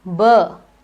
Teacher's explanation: burr do you feel a vibration good so this means that bur is a voiced sound it is a bilabial and it is a plosive